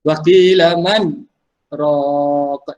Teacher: Jelaskan nun itu. Jangan masuk nun ke dalam ra. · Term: saktah